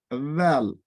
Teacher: Le Zal, on le lit avec le bout de la langue. Zal, il équivaut au D avec un tiret en bas.